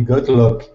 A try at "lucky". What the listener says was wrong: All right, so let's practice the word lucky. Okay, pronounce that E sound at the end of the word. The word is lucky. He got lucky.